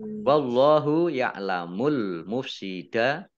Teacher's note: Allahnya dibaca tebal karena harokat di depannya fathah. Lam fathah berdiri mat tabi'i.